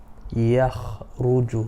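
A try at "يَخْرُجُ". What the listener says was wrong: Yeah, don't try to pause between kha and ra. Yakhruju.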